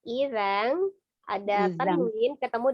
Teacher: Idzan ada tanwin ketemu dengan kafnya ikhfa ya, disamarkan.